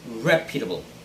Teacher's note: first syllable should be the stressed syllable